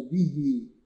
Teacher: اللي حصل إن أنا بمد الهاء كأني وصلتها بياء، وعشان كده بسميه مد صلة صغرى.